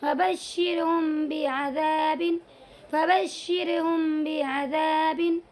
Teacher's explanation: तो यहाँ पर भी मीम साकिन के बाद बा आया हुआ है, इसीलिए इसमें इख्फा शफवी होगा और इस मीम की आवाज़ को थोड़ा नाक में ले जा करके इख्फा करेंगे। · तो यानी मीम की आवाज़ में मीम को अदा करते वक्त बिल्कुल दोनों होठों को एक साथ नहीं मिलाएंगे, बल्कि थोड़ी सी जगह खाली रखेंगे, तब जा कर के इसकी अदायगी करेंगे।